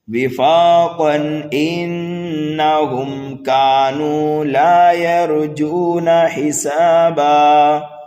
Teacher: تنوین کے بعد میں حمزہ آنے کی وجہ سے یہاں پر اظہار حلقی ہوگا